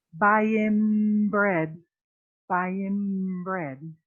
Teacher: whenever you have an n or an m and you have a p or a b a bilabial sound after that the n is going to sound a little bit like an m